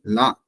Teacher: முதல் அன்னத்தை தொடும் பொழுது இது லா அப்படின்னு நம்ம உச்சரிப்போம்